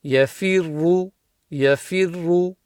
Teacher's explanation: And then the second ra is full mouth because it's got a dhamma.